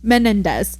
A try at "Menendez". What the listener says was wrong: There's another syllable. Menendez.